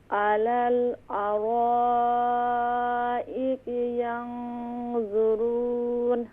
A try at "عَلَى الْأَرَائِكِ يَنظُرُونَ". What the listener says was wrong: हमज़ा और कैफ को मज़ीद क्लियर करें। अलल अराइकी यंज़ुरून।